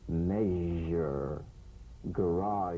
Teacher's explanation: make the whispering SH and add vocal resonance